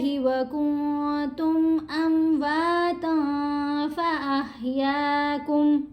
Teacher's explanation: ہم نے نون کی آواز کو ناک میں چھپا کر پڑھنا ہے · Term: احفا